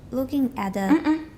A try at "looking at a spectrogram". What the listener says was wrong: 我刚说 looking 后面断 because at belongs to at a spectrogram.